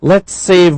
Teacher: It becomes one S. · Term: blended